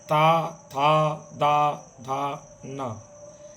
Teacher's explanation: ये दंत से उच्चारित होते हैं। दांतों में जीभ टच करती है। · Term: त वर्ग, ता वर्ग